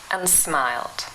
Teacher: the vowel sound ah is reduced to the schwa sound uh and becomes um and smiled let's hear it one more time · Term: vowel reduction